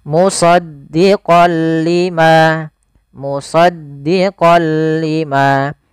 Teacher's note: Awalnya kalau kita baca musaddiqan, karena bertemu dengan huruf lam, tanwinnya masuk ke huruf lam. Suara n-nya dihilangkan diganti menjadi huruf lam. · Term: idgham bila gunnah